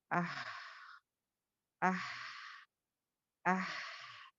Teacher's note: It comes from the middle part of the throat. لیکن وہی اگر آپ اس کو ادا کرو گے تو اس کی کوالٹی کیا ہوگی, اس کی کیریکٹرسٹک کیا ہوگی, اس میں سانس چلے گی.